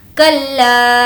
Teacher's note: لا کو کھینچیں گے کیونکہ مد ہے